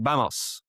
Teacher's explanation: So something like vamos, which is more like a B sound, as it's opposed in the middle of a word, where it's more like a V.